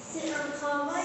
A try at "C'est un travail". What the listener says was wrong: On fait la liaison, on dit.